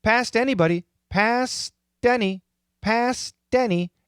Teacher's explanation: It's not a D. It's not the perfect T. It's kind of in the middle. It's actually kind of similar to the flap T.